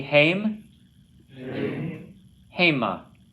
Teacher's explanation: Accents on the first syllable there.